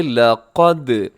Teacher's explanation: لام ہوگا باریک اور قاف موٹا، دال قلقلہ